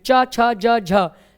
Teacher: तो हम बोल नहीं सकते च तो तालू होना जरूरी है तालू से उच्चारित होता है च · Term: तालव्य